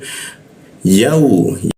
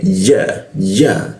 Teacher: Ku seperti itu. Yau, ya posisinya di tengah lidah dia